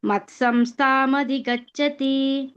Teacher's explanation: ಸೇರಿಸಿ ಹೇಳಬೇಕು ಸಂಸ್ಥಾಂ ಅಂತ ಬ್ರೇಕ್ ಕೊಡಬಾರದು